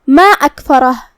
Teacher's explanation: مد جائز منفصل کا معنی ہے کہ حرف المد پہلے کلمہ کے آخری میں ہو اور اس کی وجہ جو کہ حمزہ ہے وہ دوسرے کلمہ کی شروعات میں آئے. مد جائز منفصل میں ہم اپنی آواز 2 سے 4 مد کے برابر لمبی کریں گے